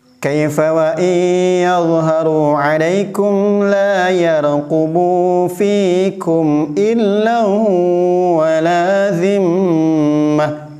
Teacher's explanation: Dalam lafaz illa wala zimmah, lan di sini ada tanwin. Karena tanwin bertemu dengan wawu maka menjadi idgham. Karena kebiasaan membaca illa sehingga ketika ada lafaz seperti ini tanwinnya tidak terbaca.